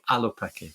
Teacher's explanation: You've got to start with a glottal stop, Alopeke. That's the word for fox in native Hawaiian language.